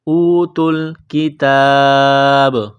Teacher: جب یہاں پر سٹاپ کریں گے وقف کریں گے تو با کو سائلنٹ کریں گے، با پر قلقلہ کریں گے ، اوتوا الکتاب، کتاب اللہ، کاف کو باریک کرنا ہے، تا